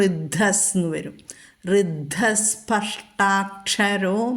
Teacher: അപ്പോൾ ഋദ്ധസ് വിസർഗം കഴിഞ്ഞിട്ട് സ്പഷ്ട സ വന്നതുകൊണ്ട് നമ്മൾ വിസർഗം സ്ഥാനത്ത് ആ വിസർഗം ലോപിക്കുകയും അവിടെ സ ചൊല്ലുകയും വേണം.